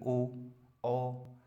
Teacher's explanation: ओष्ठ मतलब जिनमें होंठ भी घूमे और साथ ही साथ गले का भी जोर लगे, ओ। सही है ना, होंठ भी चलते हैं हमारे और गला भी चलता है, उन्हें क्या कहते हैं हम, कंठोष्ठ।